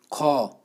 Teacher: आपका जो श्वास है मुख से बहुत ज़्यादा बाहर निकल रही है। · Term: महाप्राण